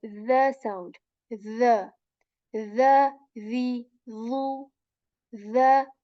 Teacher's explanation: with the today right so this is a light letter and tip of the tongue it touches the tip of our upper teeth and we say this letter very softly